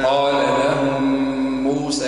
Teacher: الميم بعدها ميم. إدغام متماثل.